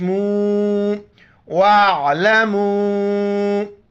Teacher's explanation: واتقوا اللہ واعلموا مد کی وجہ سے 4 الف مقدار کھینچنا ہے